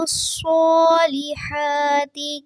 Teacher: الصالحات صاد پہ کھڑی زبر ہے، اس کو تھوڑا سا لمبا کریں گے. ہا پہ بھی کھڑی زبر ہے، اس کو بھی تھوڑا سا لمبا کریں گے.